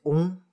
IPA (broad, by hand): ɔ̃